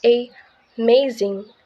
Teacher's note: in the word amazing, the second syllable is stress, so we pronounce it a amazing.